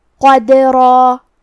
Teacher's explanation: آخری میں را پہ تنوین زبر ہے، ہم یہ کلمہ پہ روکیں گے تو تنوین زبر پہ مد الف سے روکیں گے، اور مد الف اپنے پیچھے والے حرف کا حکم لیتا ہے تو ہمیں را کو اور مد الف کو دونوں کو تفخیم سے مطلب بھاری آواز میں ادا کرنا ہے